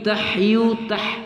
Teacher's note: pada ha halki bagian tengah ya, tenggorokan bagian tengah